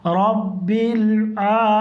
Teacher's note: رب لام کے مخرج میں زبان کو روک دیں گے, پھر عین کو ڈائریکٹ وہیں سے بولیں گے